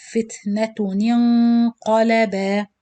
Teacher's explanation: Noon kasra, then noon sakin with gunna, then qaf.